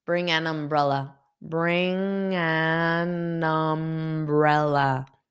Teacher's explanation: So notice that G connects to N and the N connects to umbrella.